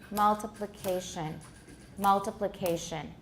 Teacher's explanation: You'll find that you can tap on the first and the 4th syllables, multiplication. The 4th syllable seems to have a higher or the same degree of stress.